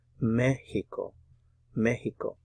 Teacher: remember to put the stress on the first syllable here. You see the accent mark there.